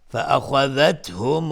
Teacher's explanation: خا از حروف استعلاء غلیظ تلفظ میشه